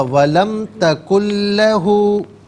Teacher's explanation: اعوذ باللہ من الشیطان الرجیم، بسم اللہ الرحمن الرحیم، وَلَمْ تَكُنْ بھئی لَهُ، ولم پہ میم پہ غنہ نہیں ہوگا